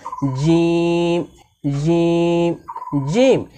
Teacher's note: জিম হরফকে জিহ্বার মাঝখান থেকে শক্ত করে পড়তে হয়